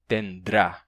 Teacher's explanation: Como é ruim de pronunciar essa sequência nrá, tenrá, aparece uma consoante de apoio entre o N e o R. E em vez de tendrá, passamos a ter tendrá. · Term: D de apoio